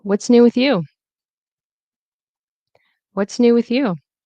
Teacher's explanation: And the next one, new and you are stressed. So the voice dips on new and rises on you.